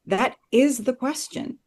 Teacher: But what Benedict Cumberbatch does that I really love is he actually hits the word is